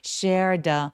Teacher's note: share 하면서 쌍시오처럼 굉장히 세게 발음해 주시는 게 좋고요.